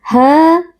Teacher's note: fathah Ya Sukun kita baca dengan lunak ha Mad thobii karena ada Alif yang sebelumnya berharakat fathah dibaca panjang dua harakat